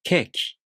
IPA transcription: keːkʲi